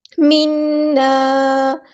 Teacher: نون پہ گنا زمانی ہو رہا ہے، الف کے برابر رکیں گے